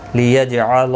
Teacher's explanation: جیم ساکن پر قلقلہ ہوگا